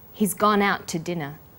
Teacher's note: The t sound is pronounced only once.